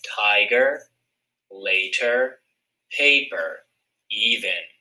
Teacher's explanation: that first syllable ends in a long vowel sound so it's considered open first syllable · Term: open syllables